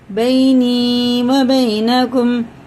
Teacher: یا ساکن سے پہلے زبر جو ہوتا ہے نا اسے جلدی پڑھتے ہیں، اس کو حرف لین بولتے ہیں